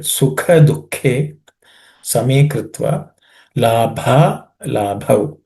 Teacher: the bha in both the second and the fourth, both of them are aspirated.